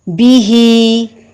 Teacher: اس کو اگر مزید علیحدہ علیحدہ کر کے سمجھیں گے تو اس طرح با متحرک ہے اور زیر کو مجہول نہیں پڑھیں گے، نیچے والے ہونٹ کو نیچے کی طرف کرتے ہوئے بی پڑھیں گے، بے نہیں پڑھیں گے۔ ہا کے نیچے کھڑی زیر ہے، اس کو لازمی لمبا کریں گے، لیکن با کی زیر کو بالکل بھی لمبا نہیں کریں گے، صرف ظاہر کریں گے۔